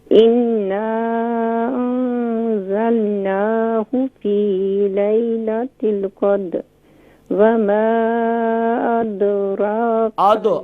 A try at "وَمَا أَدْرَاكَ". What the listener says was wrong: ادو نہیں, یہاں دال لائٹ ہوگا. وما